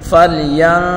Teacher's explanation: گے، اور را کو لام کے ساتھ ملا کر پڑھیں گے، اور را کو باریک پڑھیں گے · تو یہاں اس نون میں ہم گنہ کر کے پڑھیں گے، اور ضا کو پر پڑھیں گے، ضا کے اوپر بڑی حرکت ہے، بغیر کھینچے پڑھیں گے